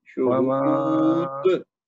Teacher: دال کی آواز آنی چاہیے نا زوردار، تاکہ پتہ چلے کہ یہ کلکلا کبرا ہوا